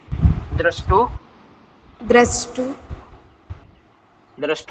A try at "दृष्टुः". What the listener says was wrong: नहीं बोले मैंने बोला था जिसके पीछे दो डोट लगेंगे